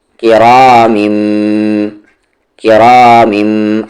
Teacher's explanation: आगे काफ पर देर की, रा को हेवी करेंगे, रा किरा, तनवीन को कहाँ मिलाएंगे, इस वाले मीम में, किरामिम, किरामिम, और गुन्ना करेंगे